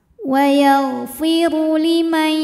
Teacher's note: Huruf ra dibaca secara tafkhim karena ra berbaris dhammah, maka ra tebal.